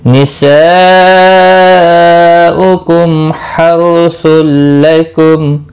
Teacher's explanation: मीम साकिन के बाद हा आया है, इजहार शफवी होगा। रौ साकिन से पहले जबर है, पुर पढ़ा जाएगा।